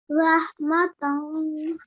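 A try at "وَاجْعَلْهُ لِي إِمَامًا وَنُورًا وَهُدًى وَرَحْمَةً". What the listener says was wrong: Very nicely read.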